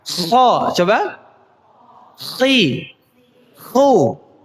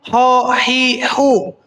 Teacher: huruf K itu ada sesuatu ada getar di ujung tenggorokan